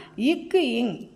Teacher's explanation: நாவினுடைய முதல் பகுதி இருக்கு இல்லையா அது அன்னத்தின் அடிப்பகுதியை தொடுகின்றது. அண்ணம்னா என்னன்னு தெரியும் இல்லையா அண்ணம்னா நாக்கு இல்லையா அன்னத்தினுடைய அடிப்பகுதியை தொடுகின்றது.